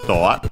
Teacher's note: Doa is English door, accented on the do, as expected